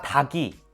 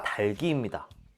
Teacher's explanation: 그럼 연음해야겠죠? 리을 기역 중에 기역이 올라가야 하니까 달기가 되겠네요